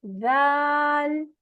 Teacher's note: जबान की नोक ऊपर के सामने वाले दो दांतों के किनारों से लगती है